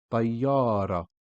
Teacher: we are only pronouncing up to the last vowelized letter before ta marbuta, which is ra fatha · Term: silent ta marbuta